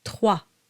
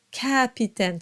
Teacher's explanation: And the A is a bit darker than capitaine.